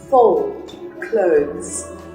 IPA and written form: fəʊld kləʊðz (fold clothes)